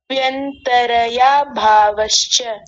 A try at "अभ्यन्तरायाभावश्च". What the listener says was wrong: तरया थोड़ी है, तराया भावश्च, तराया।